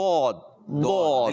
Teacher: ज़बान का बगली किनारा जब ऊपर की दाढ़ों से उसकी जड़ों से टकराता है, 5 दाढ़ों की जड़ें, क्योंकि एक हिस्से में, मुंह के ऊपर के हिस्से में कुल 10 दाढ़ें होती हैं, तो 5 एक तरफ 5 दूसरी तरफ, तो आप 5 एक साइड की दाढ़ें जब उल्टी तरफ लगाएंगे, उनकी जड़ों से ये हर्फ फिर अदा होता है दौद।